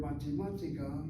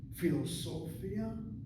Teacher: So a five syllable word the middle of the word seems to get the emphasis.